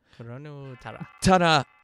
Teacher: you get that little glottal sound.